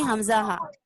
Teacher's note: انتہائی حلق سے ادا ہوتے ہیں